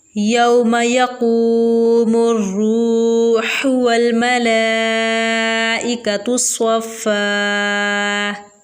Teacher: क़ाफ को पुर यानी मोटा करके पढ़ेंगे। आगे रवा है, रवा के ऊपर पेश है, रवा को पुर पढ़ेंगे। वाव साकिन से पहले रवा पर पेश आ गया तो यहाँ पर वाव मद्दा का कायदा भी इस्तेमाल होगा।